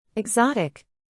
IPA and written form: ɪɡˈzɑː.tɪk (Exotic)